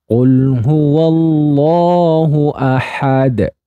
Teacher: lamnya dibaca jelas, Allahnya dibaca tafhim, ahadunya dibaca qalqalah kubro.